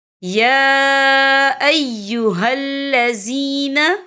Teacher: فَأَصْبَحُوا خَاسِرِينَ یا ایہا الذین، یا دیکھیں یا کے پر کھڑی حرکات ہے اور اس پر چھوٹی سی مد بھی ہے، تو ہم یہاں 3 یا 4 حرکت کے برابر کھینچ کے پڑھیں گے۔